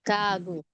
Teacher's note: ito po kasing sa initial, more on sound, nasa pagitan ng sound ng G or K, okay? Pag nasa second syllable, sound na mismo ng G.